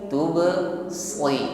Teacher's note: Shad kasrah tetap tebal. Jadi bukan diucapkan tipis sebagaimana sin